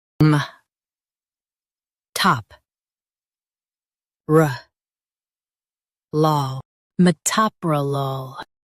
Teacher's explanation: Stress the top syllable and keep ruh light.